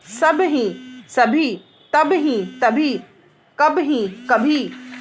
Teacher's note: अल्प प्राण के बाद ह आने पर दोनों मिलाकर महाप्राण हो जाते हैं।